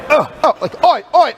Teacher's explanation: glottal onset basically the chords are together when it starts and then they go oh